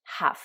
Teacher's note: il y a le L qui est muet